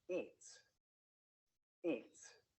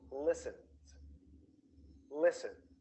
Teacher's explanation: We say s in eats, eats. We say z in listens, listens.